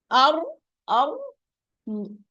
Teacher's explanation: Regarding the characteristics of the sifat of the ra, we first look for the running of the sound. When we pronounce the ra, the articulation point is not totally opened, neither totally closed. It's some place in between. That's why it is an in between letter or حرف بيني, حرف متوسط, which means that the sound is not that running. · The air is not running a lot when I'm pronouncing the ra, the Arabic ra.